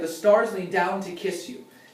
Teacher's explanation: And stars down and kiss were the words that were naturally emphasized by the rhythm.